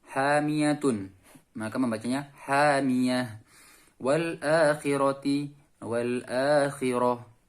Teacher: tak marbutoh diganti ha dan disukun. Ya, tak marbutoh itu tak yang seperti huruf ha yang di akhir tapi ada titiknya.